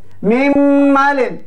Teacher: Ya, mim malin, dengung punya mim, bukan dengung punya nun. Jadi dia masukkan dengung dalam huruf yang kedua. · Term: idgham kamil